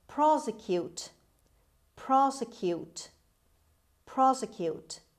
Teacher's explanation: the stress is at the beginning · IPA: /ˈprɑːsɪkjuːt/